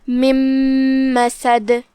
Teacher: ہم یہ نون کو میم میں داخل کر کے غنہ کے ساتھ اور تشدید کے ساتھ یہ حکم کو ادا کریں گے۔ مم مسد، کلمت مسد کے آخر میں دال پہ روکیں گے تو اس کا حکم ہوگا قلقلہ، لہذا ہم دال کو ہلاتے ہوئے یہ کلمہ کو ادا کریں گے۔